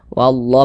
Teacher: ini nah ni fathah berdiri nih atau Alif kecil nah wallah Mad thobii panjangnya dua harakat